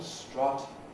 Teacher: The vowel strut, which is central and pretty open